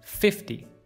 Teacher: when you say these numbers 30, 40, 50, 60, 70 or 80, you should stress the first syllable